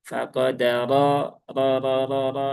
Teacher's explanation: rnya ini harakatnya fathah. Nah, maka r-nya jadi tebal ya.